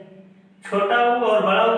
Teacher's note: छोटा उ और बड़ा उ का उच्चारण स्थान ओष्ठ है।